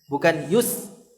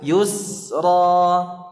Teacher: Karena sin ini termasuk huruf rakhawah di mana durasinya panjang. Bukan pendek.